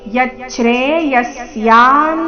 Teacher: ವಿಸರ್ಗದ ಉಚ್ಚಾರಣೆ ಅರ್ಧ ಸ ರೀತಿ